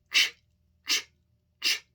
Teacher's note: put your tongue at the top of your mouth not at your teeth but at the top and let it down air comes out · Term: CH sound